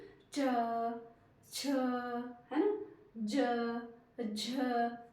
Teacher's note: तो हमारी जीभ कहां टच हो रही है ऊपर तालू पर है ना तो ये वर्ण कहां से निकल रहे हैं तालव्य मतलब तालू